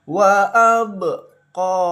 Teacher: Wa abqo dipantulkan membacanya. Tidak ada ketukan, tidak ada harakat ya. Jadi hanya dipantulkan saja seperti itu. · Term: Qalqalah